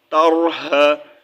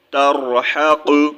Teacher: را کو موٹا پڑھیں گے، کیونکہ اس سے پہلے جو ہے لیٹر پر یہ را ساکن ہو رہا ہے اور اس سے پہلے جو لیٹر ہے اس کے اوپر زبر آ رہی ہے، تو ہم اس کو جو ہے پر پڑھیں گے، یعنی کہ موٹا پڑھیں گے، ٹھیک ہے۔